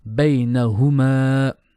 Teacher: bay is short and ma is long.